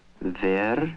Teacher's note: there is no w sound in Russian, and he uses the nearest sound to it, the v.